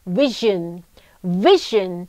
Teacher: ส่วนเสียงตัวZHนะคะออกเสียงว่าลำคอสั่นค่ะ